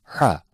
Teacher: the point of articulation for HA is the center of throat it is pronounced by choking the center of throat very lightly